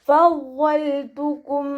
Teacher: ഫ മഖ്റജ് വരുന്നത് നമ്മുടെ മേലെ മുൻപല്ലിൻ്റെ അറ്റം താഴെ ചുണ്ടിൻ്റെ ഉൾവശത്ത് വെച്ചിട്ടാണ് ലൈറ്റാക്കി ഉച്ചരിക്കുക കേട്ടോ.